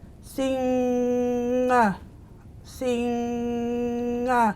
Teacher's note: So we're pushing the sound up through the nose to get the it's almost like a hum, and a lot of people struggle with that in Aboriginal languages.